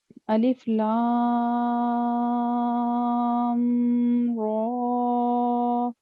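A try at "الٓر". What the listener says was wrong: اس کے علاوہ یہ جو آپ نے کہا نا، الف لام را، میم پر کا گنہ بنا دیا ہے.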